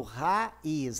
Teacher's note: o A e o I são vogais, mas elas não estão juntas, elas não são como ditongo e não em 3 como tritongo. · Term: hiato